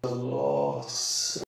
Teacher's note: he has Bath broadening throughout in words like after, last, ask